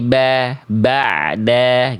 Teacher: Harusnya ba'da bukan ba ba ini masuk itu sengau ain enggak boleh sengau ya enggak apa-apa nanti dilatih sedikit lagi ya. Jadi ainnya jangan masuk ke rongga hidung ya dan ba dan ainnya dibaca tipis